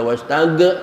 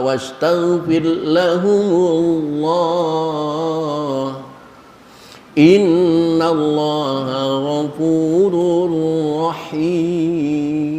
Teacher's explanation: Bacalah tanpa pantulan qalqalah